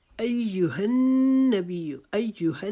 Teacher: ہا کی دفعہ آپ نے حلق کے نیچے سے آواز نکالنے کی کوشش کرنی ہے جیسے سانس چڑھے کے ساتھ ہم آواز نکالتے ہیں